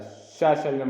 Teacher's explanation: जो शा होता है वह तालव्य से बोला जाता है। जो शा है वह तालव्य से बोला जाता है। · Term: तालव्य ध्वनि